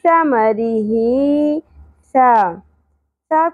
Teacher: انتہائی نرمی سے ادا کرنا ہے سیٹی کی اواز اور شدت ہرگز نہیں ہونی چاہیے سین کی طرح نہیں پڑھنا ثا نہیں پڑھنا ٹھیک ہے زبان